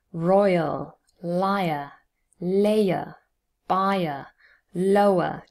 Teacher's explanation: usually the diphthong forms its own syllable here and the schwa forms a second syllable